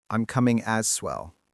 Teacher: Like me too becomes one word, me too. And as well often sounds like as swell. The S jumps over to the next word.